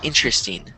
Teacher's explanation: it's kind of like the R and the E are switched